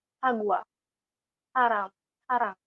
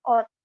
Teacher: Di awal suku kata itu, untuk kata siot itu lebih terdengar S, seperti sagwa, sarang, sarang. Sementara jika disimpan di akhir suku kata, siot itu maka akan terdengar seperti huruf T, yaitu ot.